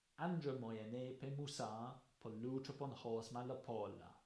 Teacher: the first one has a lot of dactyls in, so a lot of long syllables followed by short ones